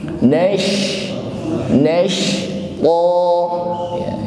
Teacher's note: nashqa huruf shin yang bersukun, maka nash di sini tampak jelas sifat tafasyi pada huruf shin, tidak sekedar nas terlalu tipis ya, bukan sin tapi shin.